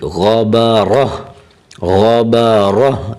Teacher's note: اگر وقف کریں گے تو غبارتن حالت وقف میں جو تا ہے وہ ہا پڑی جائے گی